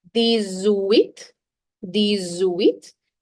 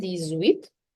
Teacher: X, when it's followed by a vowel, has a Z sound. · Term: liaison